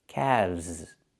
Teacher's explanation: Not calves, but calves. The L is silent and we pronounce the V sound with vibration plus the Z sound like zebra together.